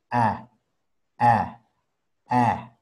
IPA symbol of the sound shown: æ